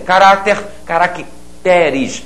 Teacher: A sílaba tônica passou a ser a sílaba seguinte.